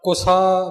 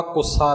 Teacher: ਕੁਸਾ ਬਿਲਕੁਲ ਪੋਲਾ ਬੋਲਿਆ ਜਾਵੇਗਾ, ਕੁੱਸਾ ਨਹੀਂ